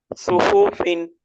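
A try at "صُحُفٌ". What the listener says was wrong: সু একটু টান হয়ে যাচ্ছে, ওই টানটা দেওয়া যাবে না। সুহুফুন।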